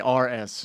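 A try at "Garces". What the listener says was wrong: No, but the R is silent. The R is silent.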